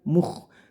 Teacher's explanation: Mukh jangan sampai terdengar Mukh bukan o tapi u Mukh terus khnya dibaca kasar jadi suaranya serak atau kasar atau mendengkur